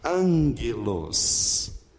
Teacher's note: Note que o primeiro G, gama, tem som do N anasalado.